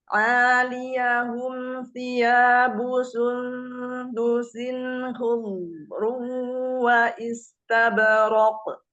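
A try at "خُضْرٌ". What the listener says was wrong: Nah, jangan dipanjangkan hu-nya, jangan hudru, enggak. Hudru, hudru gitu ya. Dari kho dhamah ke sukun dodnya itu langsung hud. Enggak hud. Jangan ngayun di hu-nya. Hud. Nah, seolah seperti kayak terjeda di huruf dodnya.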